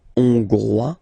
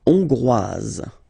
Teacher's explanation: final S not pronounced for the masculine form, and then you pronounce it here for the feminine form